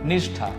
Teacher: પણ અહીંયા જે ઠ છે એ મૂર્ધન્ય છે, એટલા માટે એની સાથે જે આવેલું શ છે એ પણ મૂર્ધન્ય જ આવે. એટલા માટે સનો શ થઈ ગયો.